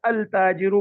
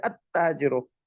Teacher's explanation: we have huruf shamsiya, where we assimilate the lam with the letter itself. We don't say al tajiru, we say at tajiru.